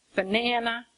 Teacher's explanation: when I say banana, the accent is on the na, banana, okay?